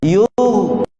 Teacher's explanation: Huruf ghin huruf isti'la. Bila kita sebut huruf ghin ni terangkat pangkal lidah. Kemudian tebalkan sedikit bunyi dia dan elakkan dari qalqalah huruf ghin. Jangan yugha.